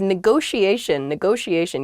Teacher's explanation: there are two t's in this but neither t is a hard t they're both very soft that sh sound because they're followed by the i and another vowel that she